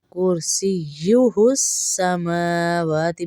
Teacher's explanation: میم اور واو پہ کھڑا زبر ہے تو ان کو ایک ایک الف کے برابر کھینچ کے پڑھیں گے.